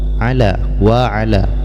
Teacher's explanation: Panjangnya bisa 2 harkat paling pendek dan bisa 4 ataupun 5 harkat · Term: mad jaiz munfasil